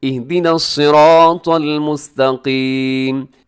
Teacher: اہدی نصرا، را موٹا پڑا جائے گا، اور آگے جو مشکل ہے وہ ہے طا، طا کو موٹا کیجیے گا، طا باریک نہیں ہے، ہمیشہ موٹا پڑا جاتا ہے